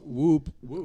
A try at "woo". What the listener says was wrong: No P, just woo. W-O-O.